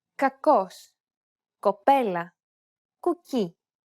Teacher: This is the sound that this letter makes in combination with an A, O, or U vowel. The sound should be coming from the back of your mouth while you keep your lips rounded.